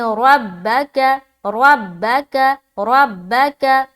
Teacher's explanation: را کو پر رکھتے ہوئے با میں ملائیں گے